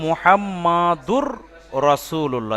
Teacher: তানবিনটাকে single করে র double হলো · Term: ইদগাম